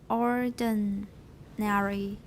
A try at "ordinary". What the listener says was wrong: I don't say airy, it's ordinary.